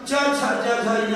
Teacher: च छ ज झ य का उच्चारण तालु या तालव्य से होता है